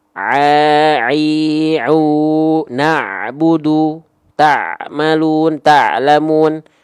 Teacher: Ain dan ha kecil bersamaan dilafalkan dari wastul halqi, tengah tenggorokan.